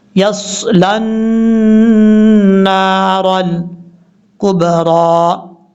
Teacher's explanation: نون کے اوپر شد ہونے کی وجہ سے غنہ کیا جائے گا